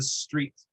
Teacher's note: the s in street has no vowel coming off of it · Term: consonant clusters